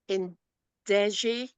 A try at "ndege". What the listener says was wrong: Ndege. Then G is still coming out as G. It's not G. It's ga. So the pronunciation is ndege.